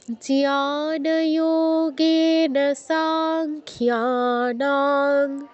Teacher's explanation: এখানে একটা জিনিস খেয়াল করুন, আমি কিন্তু সাংখ্যানাং বলছি না, সাতে দীর্ঘ করে তারপর অনুস্বারে উচ্চারণ করছি।